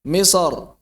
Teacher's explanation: Misr dibaca tebal. Kenapa? Karena fathah misra ketika wasolnya.